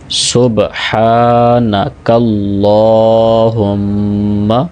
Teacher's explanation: بعض احباب اس کو کلہم پڑھ دیتے ہیں، تو کلہم نہیں، کلہم، ہا کو پھر میم کے ساتھ ملاتے ہوئے بھی نوز میں آواز بھی لے کے جائیں گے، غنہ کریں گے